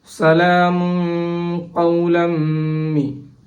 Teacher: The mim harf came after the tanween and the hukum is idgham bi ghunna. We have to idgham it with ghunnat.